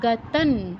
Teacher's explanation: অনুস্বারের স্থলে নয়ের মতো উচ্চারণ হবে যেহেতু ত বর্গীয় আছে।